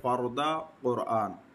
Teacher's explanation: اگر را ساکن ماقبل مفتوح یا مضموم ہے جیسے فردا اور قرآن، تو دونوں صورتوں میں را پر پڑھی جائے گی